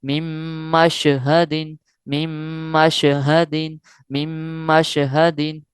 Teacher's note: نون ساکن کو ختم کر دیں گے اور میم کو میم کے ساتھ ڈائریکٹ ملائیں گے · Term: غنہ